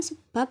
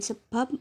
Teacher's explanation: direalisasikan sebagai bunyi B atau P apabila berposisi sebagai koda pada sebuah silabel